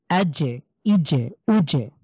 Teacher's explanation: জিমের উচ্চারণ হলো আমাদের তালব্য বর্ণ এটা জিম অর্থাৎ জিভের তালু তার উপরের তালুর সাথে খুব স্ট্রংলি লাগিয়ে আমরা এটা উচ্চারণ করব